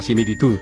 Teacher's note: la palabra similitud lleva la mayor fuerza de voz en la última sílaba, y según el cuadro, no se tilda.